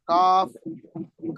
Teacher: काफ के मखरज से जरा नीचे जुबान की जड़ और लहात, इससे काफ निकलता है। काफ काफ, काफ किताब वाला काफ।